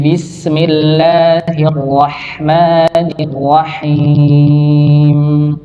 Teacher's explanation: ada yang lebih baik lagi yaitu menipiskan huruf ha karena huruf ha tipis